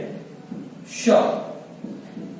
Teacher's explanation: इसके अलावा हमारा जो एक वर्ण है श, इसे तालव्य शा भी बोला जाता है, ये भी हमारा तालु के द्वारा उच्चारित किया जाता है